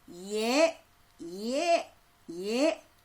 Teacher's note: 혀 앞쪽에서 소리가 나면서 점점 입이 벌어지는 게 느껴지나요? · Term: 전설모음